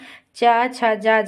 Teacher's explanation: चा, छा, जा, झा के उच्चारण में संघर्ष की स्थिति बनती है, अतः इन्हें स्पर्श संघर्षी व्यंजन भी कहते हैं।